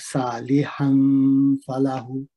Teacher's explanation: نون تنوین ہے اور اس کے بعد فا کلمہ ہے، یہاں پہ اخفا ہوگا. فَلَهُ ہو میں الٹی پیش ہے جو کہ بدل واو مد ہے، اس کو 2 حرکت لمبا کریں گے.